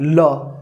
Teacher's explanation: पार्श्विक वर्ण या वर्ष वर्ण ल, जिसको बोलने के लिए जीभ जो है हमारी, ठीक है, थोड़ी टेढ़ी होती है और सांस थोड़ी बाहर आती है, ल। ठीक है, तो इसलिए इसको क्या बोलते हैं?